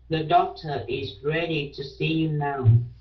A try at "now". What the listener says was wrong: Yeah, now, chứ không phải no.